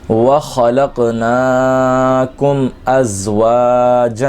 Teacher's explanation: میم ساکن میں غنہ نہیں کریں گے